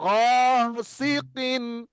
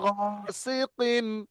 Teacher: নুন সাকিনের আওয়াজকে আমরা প্রকাশ করব, প্রকাশ করে বিনা গুণনায় পড়বো। এখানে দেখেন গাসিকিন, দেখেন প্রকাশ করলাম আর গুণনা করলাম না। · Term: ইজহার